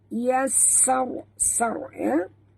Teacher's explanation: Ra itu mati, huruf sebelumnya baris atas kena baca tebal ya.